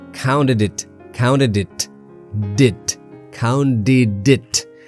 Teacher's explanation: The T in counted links with the next word and of course becomes D, right? So it sounds like counted it, did, counted it.